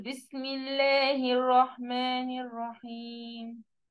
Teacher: اللام بتاع كلمه لفظه الله تبقى مرققه